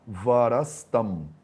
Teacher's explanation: Então o varaha tem o visarga sandhi, que é o sandhi desses dois pontinhos, que ele transforma o visarga em S, em sa. Então o visarga vira Saholland e ele se junta com o tam para virar varastam.